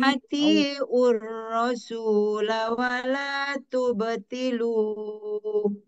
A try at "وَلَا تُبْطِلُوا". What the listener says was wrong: Iya, lu-nya. Lu-nya berapa harakat? Nah, 2 harakat Bu.